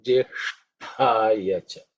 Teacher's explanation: The second compound letter is Sh, okay? Ish, is the cerebral sh, and tha is the second letter in the ta varga, so it has to be aspirated.